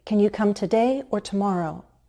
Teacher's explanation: Rising and then falling. I'm only presenting two alternatives, and I expect you to choose one of them.